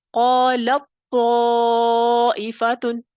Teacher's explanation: پہلا ساکن ہے قالت، پھر طائفتن طا متحرک ہے، تا کا طا میں ادغام ہو گیا